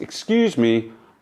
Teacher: Excuse me, rising, falling intonation.